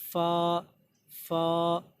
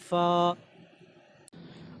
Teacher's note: ऊपर वाले दांतों का सिरा को नीचे जो होंठ है उसके गीले हिस्से पर टच करना है तो वहाँ से फ़ा निकल रहा है।